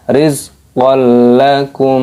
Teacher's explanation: ada hukum idgham bila gunnah, fathah tanwin bertemu dengan huruf lam, dimasukkan.